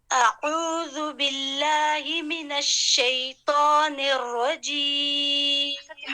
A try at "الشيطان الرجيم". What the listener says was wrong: حرف الطاء کو تھوڑا سا اور بھرا کریں. شیطان الرجیم. شیطان حرف الطا کو بھارا کرنا ہے. آپ نے بالکل نرم کیا ہوا ہے، نرم نہیں کرے. ہم نے حرف التا نہیں پڑھنا. طا تھوڑے سے بھارا کریں.